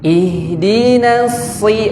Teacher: Ihdinas itu sod ujung lidah ke gigi seri bawah, dan sod ini huruf tebal. Kalau dalam bahasa tahsin itu huruf isti'la.